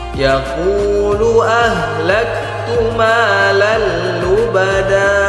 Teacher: Perhatikan tanwin berjumpa dengan huruf lam, maka hukumnya idgham bila gunnah. Idgham bila gunnah maknanya kita masukkan huruf lam, kemudian tidak kita dengungkan. Tidak boleh didengungkan, hanya cukup ditekan saja.